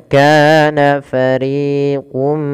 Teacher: harakat karena dia Mad thii kemudian RI juga sama dua harakat jangan dibedakan antara Ka dan RI harus sama panjangnya